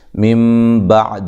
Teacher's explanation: یہاں نون ساکن کا اقلاب ہے، یہاں یہ جو نون ہے اس کو میم سے بدل کے پڑھا جاتا ہے